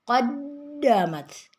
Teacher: ada dal bertasdid, harus tekan yang kuat, qaddamat, jangan qaddamat, jangan direm atau disentak, harus tetap ditekannya dengan kuat, qaddamat.